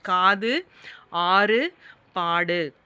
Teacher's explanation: குற்றிய லுகரம் அரை மாத்திரை அளவுக்கு தான் ஒலிக்கும்.